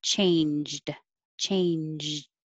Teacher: pretty close together changed changed i'm making the jaw and then i'm stopping it by putting my tongue in the d position